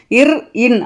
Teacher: மேல்வாயை நாக்கின் நுனி மிகவும் பொருந்துவதால் பிறப்பது இன்